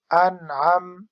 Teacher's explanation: حمزہ نون زبر ان، عین میم زبر عم، انعم. اس پر غنہ نہیں ہوگا کیونکہ نون ساکن کے بعد حرف خلقی ہے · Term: اظہار حلقی